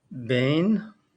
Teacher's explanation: When you're reading ben, you have the be and then the yud right after it. So you have the be sound and then the e that comes right after. So instead of sounding like ben, it sounds bain.